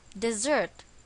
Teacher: if you've noticed the stress is again on the second syllable